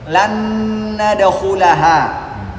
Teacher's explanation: Karena nun punya dengung, nun yang berikutnya juga punya dengung. Maka sempurna dengungnya karena sama-sama punya sifat dengung.